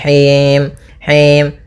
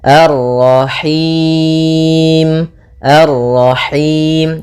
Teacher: Nah, ini masuk hidung, tapi enggak mau, dia lepas dari yang namanya masuk hidung dan juga lepas dari namanya imalah, yaitu harus kasrah sempurna